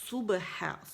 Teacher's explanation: صاد موٹی، یہ سین نہیں ہے